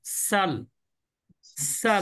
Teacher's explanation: জিহ্বার আগা নিচে দাঁতের গোড়া থেকে সিনের উচ্চারণ হয় সাল, সাল। সাল যেমন আপনি সাল যেমন চড়ুই পাখি চি চি করে না, স- সাল, সাল বলেন।